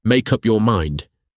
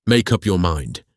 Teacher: To say this beautifully, link the first two words tightly together. The E is silent so the K connects directly to the U. It should sound like, make up your mind.